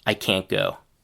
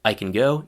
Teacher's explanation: in the negative we do hear a clear short a sound, but the t is reduced to a partial stopped t sound